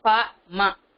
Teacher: மேல் உதடும் கீழ் உதடும் இயைந்து பொருந்தி பிறப்பதுதான் ப ம · அதற்கடுத்து பாமா இருக்கு, பா மா, இதழோடு இதழ் பொருந்த. பா மா சொல்லும் போது 2 இதழும் இணைந்து பிறக்கணும்.